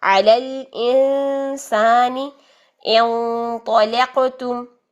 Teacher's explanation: علی الانسان انطلقتم، انط موٹا ہو گیا اخفا، انطلقتم موٹا کیوں ہوا؟ کیونکہ آگے طا آ رہا ہے، طا موٹا حرف ہے